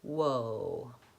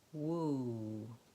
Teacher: So my lips are round for the W. My lips are also round if I'm saying an oo or an O vowel.